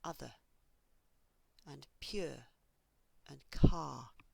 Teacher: when I say these words on their own, there is no R. I only add a R when I join the words together.